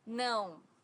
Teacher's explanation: no has a very unique sound in Portuguese because it's a nasal sound